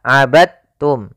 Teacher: hati-hati jangan dibaca abadtum ya tapi langsung dimasukkan ke ta abadum bukan abadtum ya Meskipun Dal termasuk huruf Qalqalah karena dia